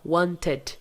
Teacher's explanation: esse som aqui de i não é de i é um som mais puxado pro e